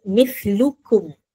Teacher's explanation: Dia izhar nyata. Syafawi tu maksudnya bibir, nyata di bibir. Bila kita sebut mithlukum, mim tu nyata bunyi dia. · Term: izhar syafawi